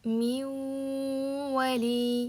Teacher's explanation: demak nunni vga aylantirib yuboramiz degani min vali qaranglar minvali deb o'tib ketsam shunchaki idg'om bo'ladi.